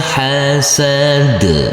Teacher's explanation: harus kita sukunkan dan karena huruf Dal ini termasuk bacaan qqala maka huruf Dal harus kita pantulkan